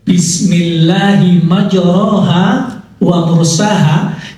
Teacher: Maja waursaha itu membaca bukan ro tetapi membacanya dengan re jadi menurut kaidah bunyinya ro menurut riwayat bunyinya re